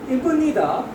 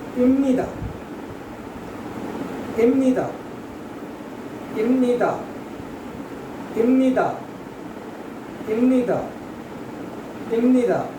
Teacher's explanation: if any nasal sound come after this ba, then the sound of this ba or b will change into ma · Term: nasalization